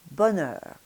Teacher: in French the tongue tip is going to be down behind the lower teeth, and it's the blade of the tongue that's going to be hitting against the inside of the upper teeth to make the N sound